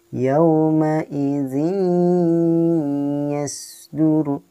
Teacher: Ini hukum bacaan idgham bigunnah, dimasukkan dengan dengung.